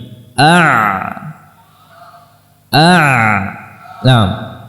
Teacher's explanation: maka di sini makhrajnya huruf Ain dan ha ya a a huruf Ain dengan merapatkan antara lisanul mizmar dengan dinding belakang kita rapatkan kemudian kita kembalikan lagi a a begitu A jadi tidak rapat sampai akhir pengucapan tapi